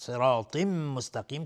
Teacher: تا هم از حروف استعلاء غلیظ تلفظ میشه